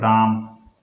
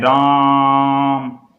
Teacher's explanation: किसी व्यक्ति को दूर से खड़े उसको पुकार रहे हैं, जैसे राम, तो ये प्लुत स्वर होते हैं